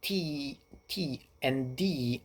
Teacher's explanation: the way you move the tongue against that t t and D is pretty much the same thing the only difference is the action of the vocal cords